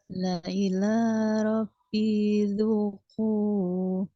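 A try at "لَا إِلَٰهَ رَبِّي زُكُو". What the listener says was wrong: Oke, kepanjangan, masih kepanjangan. La ilaha Rabbi Zuku.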